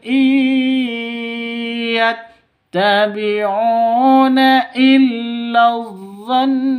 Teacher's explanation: Nun tasdid guna musyaddadah dengung dua ketukan ya. ditahan dua ketukan jika berhenti. Ketika berhenti ini don dua ketukan seperti itu.